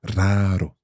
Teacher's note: And then the second R is a soft R because it's in the middle. It's an intervocalic R Eso es.